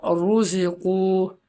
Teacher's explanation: را پر پیش ہے تو را کو موٹا پڑھیں گے